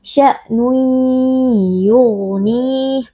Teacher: kita masukkan tanwin ke dalam huruf ya lalu kita baca dengan berdengung. Sya'nun yughnih, huruf ghain huruf tafkhim kita baca dengan mengangkat pangkal lidah. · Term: idgham bi gunnah